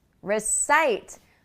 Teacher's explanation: So recite has the stress on the second syllable, as you can see, recite. So that first syllable is not recite, it's recite.